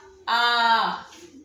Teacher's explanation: विव्रत स्वर क्या है कि जिनके उच्चारण में मुख अधिक खुलता है